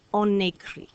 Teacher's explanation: when we have on in front of the vowel, we hear that liaison with the N.